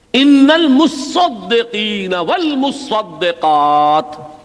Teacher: متصدق، باب تفعول ہے یہ، تا صاد کے اندر مدغم ہو گئی تو صاد کے اوپر تشدید آ گئی، یہ ایک صاد ہے ایک تا ہے، در حقیقت یہاں پر ادغام کا قاعدہ ہے۔